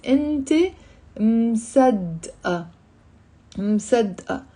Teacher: مصدقة has a ت مربوطة that's silent. Keep that in your mind because that ت مربوطة sometimes can be pronounced.